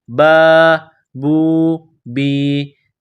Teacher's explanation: یہاں واو ہے، واو ساکن ہے، واو کے اوپر جزم ہے، واو سے پہلے با ہے، با کے اوپر پیش ہے، واو ساکن سے پہلے پیش آ جائے اور یا ساکن ہو، یا ساکن سے پہلے زیر آ جائے، جیسے یہاں با کے نیچے زیر ہے، تو ان تینوں کو حروف مدہ کہتے ہیں۔ ان تینوں کو ایک الف کے برابر کھینچ کر پڑھیں گے